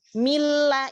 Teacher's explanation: ketika kita mengucapkan mila itu pasti masuk ke hidung, tetapi ketika la-nya sudah tidak masuk ke hidung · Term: huruf hidung